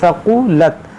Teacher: सीन नहीं पढ़ना है, सा पढ़ना है नरमी के साथ, सक़ुलत। और यहाँ बड़ा काफ है, सक़ुलत।